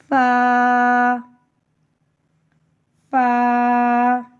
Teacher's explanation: اوپر کے اگلے دونوں دانتوں کی نوک جب نیچے کے ہونٹ کے اندر والے حصے سے لگے تو فا ادا ہوتا ہے. فا کو باریک پڑھتے ہیں.